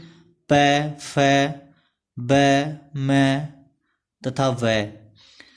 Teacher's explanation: जो अपने जो दोनों होठ हैं उनका प्रयोग होता है